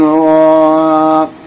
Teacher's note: را کو پر کریں گے کیونکہ اس کے اوپر زبر ہے، کھڑا زبر، اور یہ لانگ حرکات ہے۔